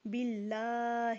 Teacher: اللہ کے لام کو موٹا نہیں کریں گے